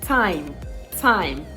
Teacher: do not be tempted by your th at the beginning